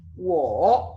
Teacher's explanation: Él está arriba, baja y vuelve a subir. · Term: tercer tono